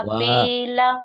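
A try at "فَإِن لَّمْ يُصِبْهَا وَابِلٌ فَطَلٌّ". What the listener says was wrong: wanya panjang.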